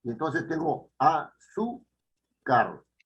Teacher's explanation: yo tengo el acento, o sea, la fuerza de la voz ya no la tengo en la última sílaba, sino la tengo en la penúltima. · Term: palabra grave